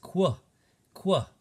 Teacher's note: QU says a K and W sound put together. So U in this situation isn't even being used as a vowel. It's more like a consonant sound. It says qu, qu. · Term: QU blend